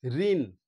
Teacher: লাস্টে যে মূর্ধান্যটা যখন উচ্চারণ হচ্ছে, মূর্ধাতে গিয়েই কিন্তু জিভটা স্পর্শ করছে। ঋণ উচ্চারণের স্থানটা তোমরা লক্ষ্য করলেই, অনুভব করতে পারলেই তোমরা কিন্তু সঠিক বানানটা লিখতে পারবে।